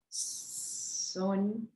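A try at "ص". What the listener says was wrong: Make it heavy. Aw sound, okay? Full mouth. Aw. Son.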